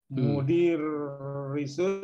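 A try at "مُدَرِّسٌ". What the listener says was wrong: Nah, ini ada fathah ya, mudarrisun. Ya, ini pakai fathah ya, ada mudarrisun.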